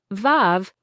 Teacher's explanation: blow air out, making your bottom lip vibrate. It's a soft, buzzing sound. Think of it like a gentle buzz. · Feel that gentle vibration on your bottom lip. This is a fricative sound, meaning air is forced through a narrow gap. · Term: V sound